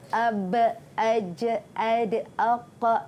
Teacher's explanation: huruf ba, huruf jim, huruf dal, huruf qaf, huruf ta. Semua ini mesti ada detak. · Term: qalqalah